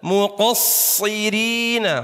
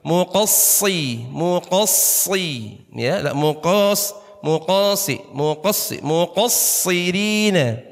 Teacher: Huruf shad kalau ketemu syiddah harus sedikit hentak halus tapi ya, jangan terlalu kaget.